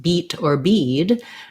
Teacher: the e vowel that is in a word like beat or bead where my tongue is more tense